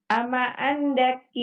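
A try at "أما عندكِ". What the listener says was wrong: Indaki, bukan angdaki. Indaki. Ama indaki.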